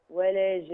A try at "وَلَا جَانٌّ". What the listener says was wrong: زوديها كمان شوية. زودي النون كمان شوية.